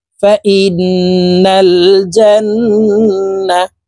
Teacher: এখানে ওয়াজিব গুন্না, হরকতের বামে নুনে মিমে তাসদিদ হইলে সর্বাবস্থায় নাকের বাসি থেকে গুন্না করিয়া পড়িতে হয়। তো এই হামজা তাসদিদওয়ালা নুনের সাথে নাকের বাসি থেকে গুন্না করে পড়ব। ফা ইন, নুন লাম জবর নাল, ফা ইন্নাল।